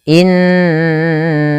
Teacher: tidak hanya cukup dibaca innaka, tapi perlu ditahan suara gunnahnya 2 harokat